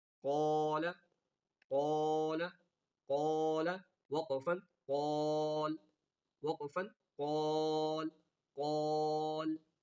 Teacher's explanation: الف مدہ کے بعد لام آ گیا تو وقف میں کھینچ کر وقف کرنا ہے